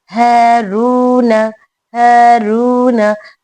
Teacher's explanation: रू में वाव मद है, इसे भी खींच के पढ़ेंगे। हारून, हारून, हा हलक के निचले हिस्से से निकालनी है।